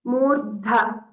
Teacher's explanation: Okay, so here focus on the Mahaprana, Murdha. So Dha gets the stress and it's also Mahaprana.